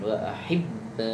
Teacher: Di situ ada tasdid kemudian ada panjang. Jadi ditekan kemudian dipanjangkan